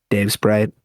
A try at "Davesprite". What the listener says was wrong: No, I mean, why do you always say it like that? With the space between words. It's not Dave Sprite, it's just Dave Sprite.